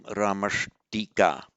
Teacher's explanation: The visarga is replaced by a sibilant, but a sibilant pronounced from the same point of articulation. The d is retroflex, so the sibilant sh also becomes retroflex. So that would become Ramashtika.